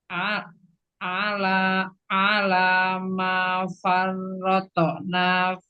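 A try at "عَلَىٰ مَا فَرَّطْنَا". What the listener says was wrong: Enggak mau ada hamzah. Roto, enggak. Farrotona. Tonya tetap tebal, tapi enggak boleh ada tambahan hamzah.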